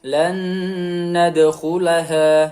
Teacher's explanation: Nun sukun bertemu dengan huruf nun, maka harus ditahan 2 sampai 3 harokat.